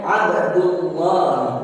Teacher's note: dinamakan lam jalalah tafkhim karena lafaz lam jalalah didahului harkat dhamma. Jadi bacaannya Abdullah.